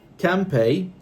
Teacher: Can pay, pronounced, this is what you will write in the exam, pronounced as, and you start saying come, and then pay, can pay. So instead of can, you said m.